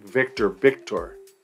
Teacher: you might also hear the V be pronounced as b